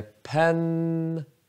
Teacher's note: Så första stavelsen är lång, men det är n-et som är lång. Och den andra är kort.